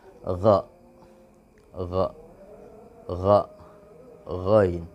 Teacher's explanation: Hanya getaran-getaran kecil yang keluar di dalam ujung tenggorokan.